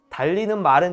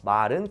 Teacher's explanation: 달리는 말은 짧고 지금 제가 하는 거 말은 길죠? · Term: 장단